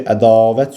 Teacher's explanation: Çünki ədavət sözündə A-da uzanma vardı.